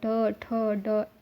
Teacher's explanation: ये जब बोलोगे तो आपका जीभ मूर्धा से टकराएगा। तो इनका उच्चारण स्थान मूर्धा होता है। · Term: ट वग